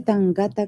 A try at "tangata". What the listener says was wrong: Sorry, this here is not tangata. It's tangata. The vowel sounds are the same between Spanish and Maori, but it looks like Maori is similar to English in that multisyllabic words, so words with more than 2 syllables, polysyllabic, the stress goes on the first syllable instead of the second.